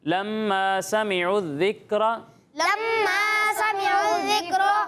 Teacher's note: غنہ کی مقدار کتنی ہے؟ ایک الف کے برابر، ٹھیک ہے؟ تو غنہ کی مقدار آپ نے پوری کرنی ہے۔